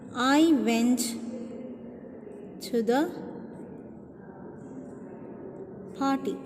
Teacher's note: I went to the party. This is normally falling tone. Normally this intonation will be normally on the last word, but it also depends upon which word is more important.